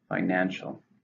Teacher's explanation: How many syllables are in financial? 3, stresses on the second.